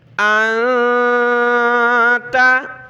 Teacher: یہ جو میں ناک میں گنگنا رہا ہوں، آواز چھپا رہا ہوں، یہ نون کے اوپر سکون جزم ہے تو یہ نون ساکن ہے۔ نون ساکن کو پڑھتے وقت ہم نے اس طرح ناک میں آواز پیدا کرنی ہوتی ہے جس کو اخفا کہا جاتا ہے